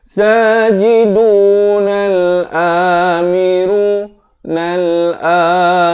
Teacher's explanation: Nun baris atas ini alif lam syamsiah, di sini sekali lagi tidak dibunyikan lam itu, terus naik di atas ra.